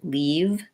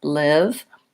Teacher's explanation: The main difference here is that the I, my tongue is slightly lower in the mouth and it's lax. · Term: lax front vowel